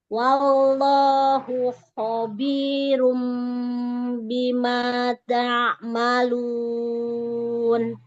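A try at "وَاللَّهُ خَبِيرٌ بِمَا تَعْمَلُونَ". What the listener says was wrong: Lafzul jalalannya ditebalkan lagi. Wallahu. Angkat pangkal lidahnya. Iya, tengah lidahnya cekungkan, pangkal lidahnya ditaikkan.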